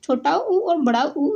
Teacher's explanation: छोटा उ और बड़ा ऊ ये होते हैं ओष्ठ